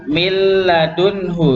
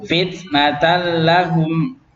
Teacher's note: Nunnya masuk ke lam secara sempurna, gak ada sisanya. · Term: idgham